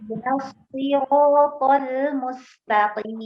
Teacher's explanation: huruf shad ini ya mengalir Bu, mengalir nafasnya, mengalir suaranya.